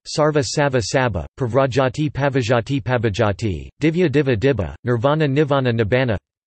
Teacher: The sequence vv resulting from assimilation changes to bb